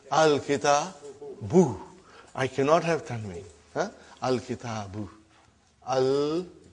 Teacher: as soon as I put al, like a magic, one vowel sign got dropped. Instead of bun, it became bu.